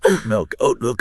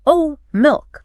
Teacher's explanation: Instead of releasing the T, you simply lock your vocal cords to stop the sound on the word oat. >> Okay? >> And while the air is safely locked in your throat, you smoothly move your lips into the M position for milk. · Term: glottle stop